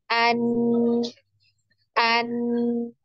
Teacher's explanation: ada pertemuan di antara lidah ya, ujung lidah dengan gusi bagian atas ya atau gusi dari gigi seri ya. Nah, jadi bisa kita tarik kesimpulan bahwasannya makhraj makhraj dari huruf nun ini adalah di ujung lidah ya, ada posisi menempel di gusi bagian atas atau gusi dari gigi seri atas ya.